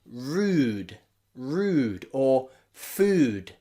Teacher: But in words like made, and had, it's a little bit softer. Where the D is at the end, we can find that it's a bit softer.